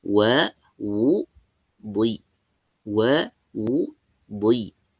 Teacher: Di posisi dnya langsung pindah ke posisi kasrah